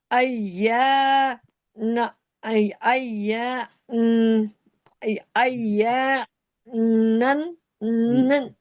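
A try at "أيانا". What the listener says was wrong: नहीं ना, आई या को खींचे, या को खींचे, नून को साकिन कर दें। या को खींच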